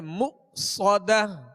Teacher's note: حمزہ ساکن ہے، اس کو جھٹکے سے ادا کریں گے مؤصدہ. صاد کو سیٹی کی آواز میں اور پر پڑھیں گے مؤصدہ.